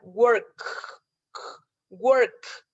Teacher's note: La K solamente cierra mi garganta, pero no está vibrando, no tiene voz.